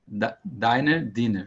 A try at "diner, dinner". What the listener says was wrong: Yeah, very good.